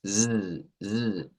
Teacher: este es un sonido alveolar fricativo sonoro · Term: S vibrante